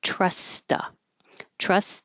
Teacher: There's two T's next to each other. So the first one I either hold or just skip it. And you're going to the next one for two, but I'm changing the oo to a.